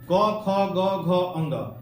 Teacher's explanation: क ख ग घ अंग, इसका उच्चारण स्थान कंठ है। ये शब्द जो है ना कंठ से निकलता है।